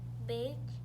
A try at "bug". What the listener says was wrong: Not big, remember that's a U. What sound does a U make?